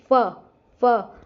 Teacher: फ होठ भी लग रहे दांत लग रहे हैं हमारे होठों पे आके। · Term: दंतोष्ठय वर्ण